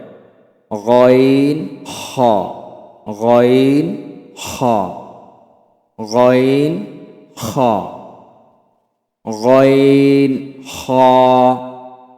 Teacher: হলকের শেষ হইতে অর্থাৎ কণ্ঠনালীর শেষ থেকে উচ্চারিত হয় গইন খ, গইন খ, গইন খ, গইন খ, গইন খ, গইন খ, গইন খ, গইন খ, গইন খ, গইন খ, গইন খ, গইন খ, গইন খ, গইন খ।